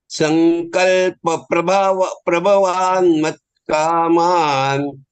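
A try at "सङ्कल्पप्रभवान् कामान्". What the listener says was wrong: Why do you say mat there? There is one some prabhavan kaman. I hear something else also in between.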